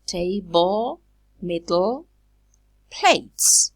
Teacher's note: So we say that the plosive is released laterally.